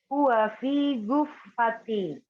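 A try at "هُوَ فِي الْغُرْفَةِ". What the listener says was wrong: Fil, langsung ke lambu ya. Fil ghurfati.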